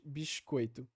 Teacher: Aqui é aquele caso que eu falei, então, da corda silábica interna, ou seja, no meio da palavra. Então, no final ali da sílaba bis, a gente vai ter essa palatalização do S, ao invés de ser, então, alveolar aqui em cima, a pico alveolar, ou seja, aqui na frente, ele vai ter uma posteriorização e ser feito ali mais perto do palato.